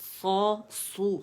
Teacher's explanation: لو واو مدہ ہے، 2 کاؤنٹ کے لیے آواز گول ہوگی. سو، سو میں موٹائی ہے پیش کے ساتھ، ہونٹ گول، کمپلیٹ رولنگ کریں گے ہونٹوں کو، ٹھیک ہے. اور سو ادا کریں گے.